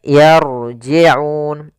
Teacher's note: rnya di sini ro tafkhim ro tebal tafkhim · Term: ra tafkhim